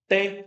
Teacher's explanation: A minha língua toca os dentes